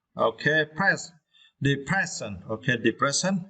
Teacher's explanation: for this words, you need to stress the second syllable, press. Okay, press.